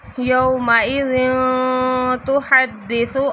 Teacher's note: تنوین کے بعد تا آ رہا ہے تو یہاں پہ بھی اخفاء ہو رہا ہے